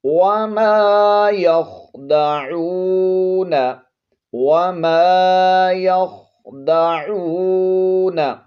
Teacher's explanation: خو کو پر پڑھیں گے، موٹا کر کے پڑھیں گے، عین کو حلق کے درمیان والے حصے سے ادا کریں گے، اور واو حرف مدہ ہے، ایک الف کی مقدار کھینچ کر پڑھیں گے۔